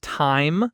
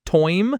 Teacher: The I sound becomes this oi sound, and it happens constantly.